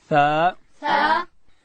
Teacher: داسې به وایو تا. او ثا ادا کیږي چې کله د ژبې سر د لوړې زامې د مخ دو غاښو وسرو ته د ژبې سر وروړو